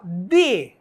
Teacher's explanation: perceba que a sua língua vai bater lá em cima no seu dente